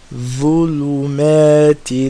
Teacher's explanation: Same as ذال, the front tip of the tongue touching the sharp part of the teeth, of the top front two teeth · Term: ظا